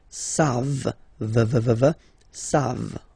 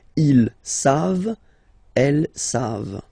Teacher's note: Here, classic ending for il and elle at the plural form. E-N-T, you don't pronounce it, so you get the sound savent